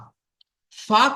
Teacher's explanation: নিচের ঠোঁটের ভিজে অংশ এবং সামনের উপরের দুই দাঁতের আগার সাথে লাগিয়ে উচ্চারিত হয়